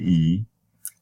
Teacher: it has high front tongue position and it is the lips are retracted just like me E